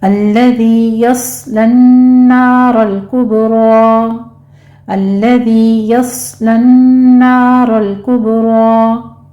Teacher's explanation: यस्लन नारल कुबरा में स्वाद पर सीटी की आवाज़ के साथ हमस होगा, इसको पुर पे पढ़ना है।